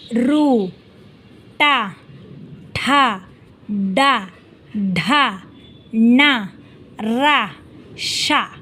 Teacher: ಸ್ಥಳ ಇಲ್ಲಿ ನಾಲಿಗೆಯ ಭಾಗಕ್ಕೆ ಮೂರ್ಧನ್ಯ ಅಂತ ಕರೀತೀವಿ ಒಳಭಾಗದ ಒಳಭಾಗದ ನೆತ್ತಿಯ ಜಾಗ ಇಲ್ಲಿ ನಾಲಿಗೆ ಬಾಗಿ ಮೂರ್ಧ ಸ್ಥಳವನ್ನ ಮೀಟುವ ಮೂಲಕ ಅಕ್ಷರಗಳು ಉಚ್ಚಾರವಾಗುತ್ತದೆ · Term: ಮೂರ್ಧನ್ಯಾಕ್ಷರಗಳು